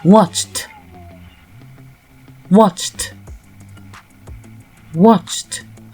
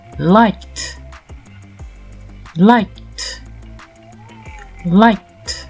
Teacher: ED se prononce T lorsque le verbe se termine par une consonne sourde. Dans ce cas, le E est toujours muet. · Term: Le ED qui se prononce T